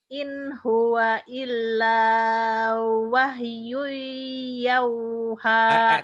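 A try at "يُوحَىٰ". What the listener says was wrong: Kalau jadi yau, itu malin. Yu. Ayo lagi, tenang.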